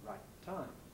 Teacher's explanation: You make the closure at the end of the I, right, you hold it for rather longer than usual, then you release it with aspiration · the first T in right should not be exploded. Here we have a sequence of plosives, sequence of identical plosives, and as I hope you know, when this arises, we don't usually explode the first one. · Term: long plosive